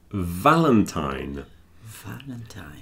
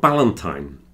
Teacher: So it's like the F, but it's voiced. So you add the vibration to the F and you get V.